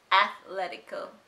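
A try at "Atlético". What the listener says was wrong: There's no th there. Atletico.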